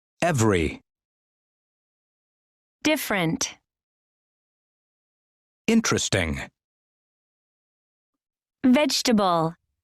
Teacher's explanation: Notice that the unstressed vowels are not pronounced. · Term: Silent syllables